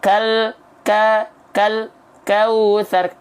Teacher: Antara bunyi al dengan bunyi ka itu nggak boleh ada jeda. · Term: tawasud